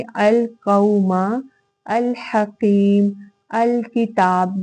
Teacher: ये सारे वो लाम हैं जिनका इजहार हो रहा है। मतलब अल, मुझे लाम की साउंड जो है वो आ रही है, मैं लाम का इजहार कर रही हूँ। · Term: इजहार कमरी